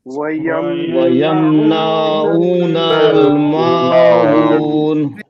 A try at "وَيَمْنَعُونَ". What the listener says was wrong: ويمنعون نہیں نا کو نہیں کھینچنا جلدی پڑھنا